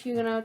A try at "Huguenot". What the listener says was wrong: Pretty sure you're not supposed to pronounce a T.